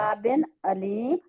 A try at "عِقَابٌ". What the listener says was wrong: عقابن عین عقابن نہ ای نہیں ہوگا نا، عقابن عین لائے اور اس کو کھینچنا بھی نہیں ہے.